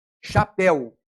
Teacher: No primeiro caso, chapéu, o E tem som de E, é aberto. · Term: ditongo aberto